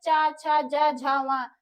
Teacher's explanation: जो हमारा च वर्ग है ये हमारा तालु से आता है